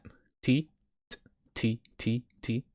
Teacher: just say t say t without vocalizing it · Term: hi hat